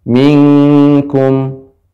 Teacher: Ikhfa pada kaf itu menjadi eng